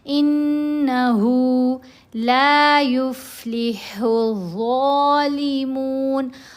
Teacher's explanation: ہا کے اوپر کھڑا پیش ہے، ہم نے اس کو 2 حرکات کے برابر لمبا کرنا ہے